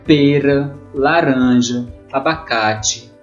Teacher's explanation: são as palavras é paroxítonas então a sílaba tônica é a penúltima uma antes da última